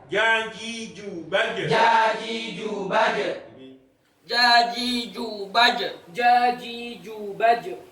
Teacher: Huruf jim keluar tepat di tengah-tengah lidah keluar tepat di tengah-tengah lidah serta menepati dengan langit-langit mulut yang atas. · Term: huruf syajariyah